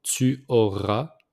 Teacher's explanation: So j'aurai, Tu auras. So we don't pronounce the S at the end. Tu auras.